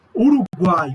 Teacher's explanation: Uruguai é um caso de tritongo oral, porque eu estou trabalhando com a boca, eu não estou tendo uma marca de nasalidade